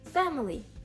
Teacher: У нас наголос також на перший склад, але далі ідуть такі, далі йде звук шва. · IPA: [ə]